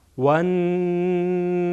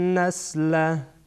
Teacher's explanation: نون در اینجا غنه میشه، یعنی صدا از بینی خارج میشه. نون در واقع زبان میچسبه به قسمت بیخ دندانهای ثنای علیا، البته کمی بالاتر از بیخ دندانها.